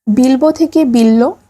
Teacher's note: এখানে পূর্ববর্তী ল এর প্রভাবে পরবর্তী ব হয়ে গেছে ল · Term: সমীভবন